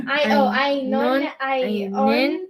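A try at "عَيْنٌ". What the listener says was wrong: No, there's the N is part of the word. Un, an, en.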